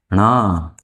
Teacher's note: मूर्धा, ट वर्ग के अंतर्गत आता है इसलिए मूर्धा, और नाक से भी बोला जाता है इसलिए नासिका।